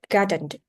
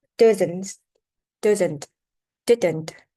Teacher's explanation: sometimes the sound makes a syllable without any vowel sound. This is called a syllabic n.